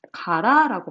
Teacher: 두 번째는 같은 모음이 탈락되는 동모음 탈락이라는 현상이 있어요